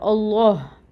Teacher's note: اللہ پہ کیونکہ کھڑی زبر ہوتی ہے تو یہاں پہ 2 کاؤنٹس پڑھا جائے گا اس کو